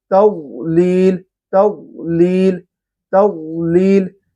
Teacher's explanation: تا کو باریک رکھنا ہے، واد کو پر رکھنا ہے